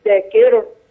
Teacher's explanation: خلي بالك الراء في المحتظر مدكر الراء ترقق